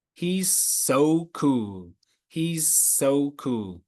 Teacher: when you get 2 s sounds, he's so, and like Superman, we don't say it twice, they come together.